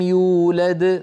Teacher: يولد موقوف عليها، إذن قلقلتها كبرى